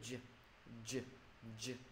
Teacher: mặc dù là gằn giọng nhưng mà gằn giọng nó nhẹ nhẹ thôi, gằn giọng trong họng mình đó.